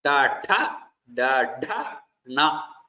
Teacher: Then Tha, when you say, tongue will touch the top of the mouth. It is called the Murdha.